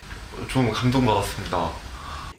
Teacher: it's common for him to slowly drop his intonation not at the very end of his sentences but the entire last part of his sentences sometimes dropping uh his intonation over multiple words